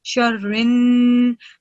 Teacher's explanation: when you're joining Ra with Noon, Mushaddad, you're supposed to produce the Gunna sound for 2 seconds